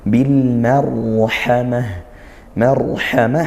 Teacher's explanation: barulah e lamnya dibaca seperti itu ya Bil Marhamah kemudian Marhamah ro sukun didahului fathah maka dia dibaca tafkhim atau tebal ya maka lidahnya naikkan Bil Marhamah Marhamah ha kemudian di akhir